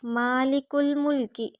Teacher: لام کی زیر کو لمبا نہیں کریں گے، لام باریک ہوگا، کاف ڈنڈے والا باریک، کاف کو لام سے ملائیں گے۔